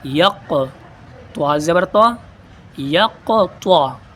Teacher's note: یہاں قلقلہ بھی کریں گے اور پر کر کے بھی پڑھیں گے قاف کو اور طا کو